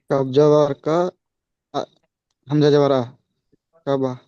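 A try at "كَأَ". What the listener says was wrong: কাফ জবর কা, হামজা জবর আ, কা আ। তাহলে কি হয়? হামজা জবর আ হচ্ছে, তাহলে কি কা বা নয়? কা আ, কা আ।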